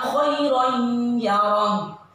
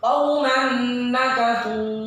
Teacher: Tanwinnya enggak terbaca khairon, tapi langsung tanwin ini dimasukkan ke dalam ya dengan berdengung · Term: idgham bi gunnah